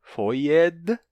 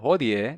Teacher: O falisco mantém o D final, foied, e o que o latim perdeu, hodie, não tem o D no final, mas o falisco perdeu o D que teria aqui no meio, depois do O.